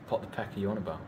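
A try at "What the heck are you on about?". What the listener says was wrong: You just did it again. You used peas instead of what you were meant to. You're pushing peas.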